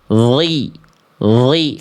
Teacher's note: Nih, kalau huruf dha makhrajnya keluar dari sama kayak huruf dzal. Dari ujung lidah menyentuh ke ujung gigi sari atas.